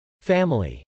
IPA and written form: fˈæməli (family)